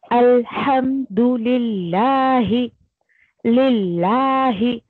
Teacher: لفظ جلالہ کا لام جو ہے وہ باریک پڑھا جائے گا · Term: مرقق